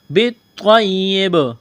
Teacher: وقف کریں گے تو با کو ساکن کریں گے، با پر قلقلہ کریں گے